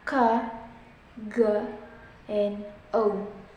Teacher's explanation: Number 7, velar sounds, ka, ga, and o. These consonant sounds are produced when the back of the tongue touches the soft palate, the velum